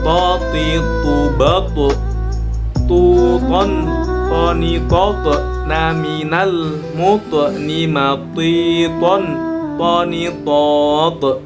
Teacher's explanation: keluarnya huruf dari ujung lidah dengan pangkal gigi seri atas. Nah, di sini ada 3 huruf hijaiyah.